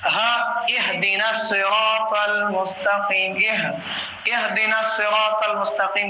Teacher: ہا جو ہے گلے کے نچلے حصے سے ادا ہونا چاہیے